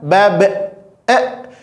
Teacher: Kesalahannya menambahkan makhraj huruf yang lain, yaitu makhraj huruf hamzah.